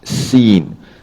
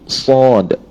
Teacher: Kalau huruf sin, dia punya safirnya berbentuk halus macam tu, sin. Tapi huruf sad, dia ada safir juga, tapi safirnya itu tadi dia lebih tebal, kerana sifat huruf sad ini juga adalah sifat isti'la, tinggi.